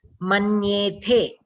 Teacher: that tha is Mahaprana, it has to be clear